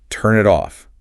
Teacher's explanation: the N links to the I and the tin links to the O. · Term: linking sounds